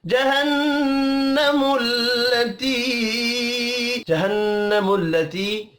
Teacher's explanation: नून मुशद्दद पर गुन्ना करेंगे, या मद्दा को एक अलिफ के बराबर खींच कर पढ़ना है